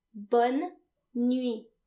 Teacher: And remember, the final T is silent because in French, most final consonants are silent.